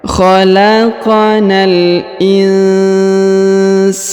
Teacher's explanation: Huruf nun sukun bertemu sa, maka kita dengungkan dan kita samarkan